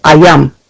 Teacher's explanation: And then the same for all of our sister tribes, whether that's Narragansett, which is a Y language, instead of hearing the L or the theta, you hear the Y, which is ayum